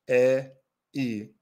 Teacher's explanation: front, e, e, they're unrounded, they're relaxed, they're front sounds. The tongue is in the front position for these sounds.